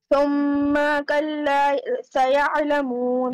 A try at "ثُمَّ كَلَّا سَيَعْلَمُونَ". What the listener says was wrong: Is there any standing fatha, any alif madda? Why are you stretching the meme then? Again.